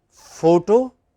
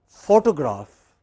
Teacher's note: in both cases you have a stress on the initial syllable